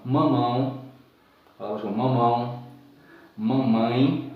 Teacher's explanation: É quando você pronuncia a sílaba e ela sai muito pelo nariz, né? Porque o som é nasalizador, o som sai mais pelo nariz, aquele som fechado. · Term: ditongo nasal